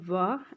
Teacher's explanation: वा का होता है स्वतंत्र दंतोष्ठ यानी कि दांत और होठ दोनों से ये बोला जाता है